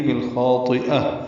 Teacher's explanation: بالخاطئہ میں لام ساکن پہ بھی اظہار قمری ہے خا کی وجہ سے، خا حروف قمری میں سے ہے اور حروف مستعلیہ میں سے ہے تو پر پڑھیں گے، اس کا الف مدہ بھی پر ہوگا، طا بھی حروف مستعلیہ میں سے ہے، یہ بھی پر ہوگا، اس کو جلدی پڑھیں گے۔